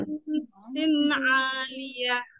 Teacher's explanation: Fi jannatin aliyah. Dipanjangkan lagi gunnahnya, gunnah mutawwalah di nun yang bertasydid.